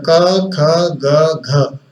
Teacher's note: क, ख, ग, घ, इन सब का उच्चारण स्थान कंठ है